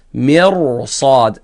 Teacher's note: تفخيم الراء بسبب استعلاء حرف الصاد